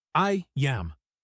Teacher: That is the /J/bridge. The /AI/ sound at the end of I slides right into the /A/ sound of am. It connects perfectly.